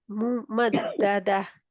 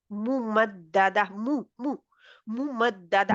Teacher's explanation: होठ गोल करके बाहर थोड़े से आते हैं यानी दरमियान में से